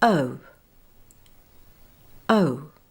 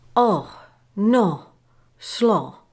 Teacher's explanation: To produce O as in the word no, say the sound uh mouth and jaw slightly open, tongue relaxed, and then glide away to uh with the lips becoming slightly rounded with the tongue raised at the back like a hump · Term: O dip thong